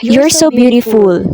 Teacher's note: So as you observe or as you hear, based on what I said, the pitch of the voice is falling. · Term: falling intonation